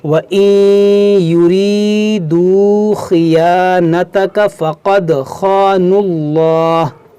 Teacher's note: یہاں پر یا ساکن سے پہلے زیر ہے، یہ یا مدہ ہے، اس کو بھی کھینچیں گے